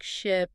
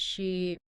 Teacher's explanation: for the long e you stretch your tongue upwards and hold the sound a bit longer